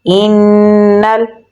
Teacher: نون پہ تشدید ہے تو یہاں پر ہم غنہ کریں گے